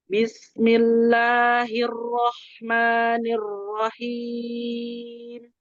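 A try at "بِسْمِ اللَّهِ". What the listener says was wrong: Ada kata bismi, ba kasro sin sukun bis, mim kasro mi. Mi. Bismil, mil, bukan mil. Mi. Lalu bacanya bukan gini. Bismillah. Jangan. Semurahkan ba kasro. Bismillahi. Bukan mil. Mi. Lamnya sukun, lamnya ditipiskan. Bismillahi. Sekarang hak sukun, kasih lagi rohnya. Lalu ar-rahi, ada suara gini. Nah, itu tenggorokan tengah. Hi, hi, hi, ar-rahi, ar-rahim. Diulang, diatur nafas dulu supaya hi-nya terdengar.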